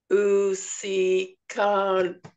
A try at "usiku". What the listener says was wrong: You've said u, si, then in the KU you say ka. It's usiku. That's how you pronounce it.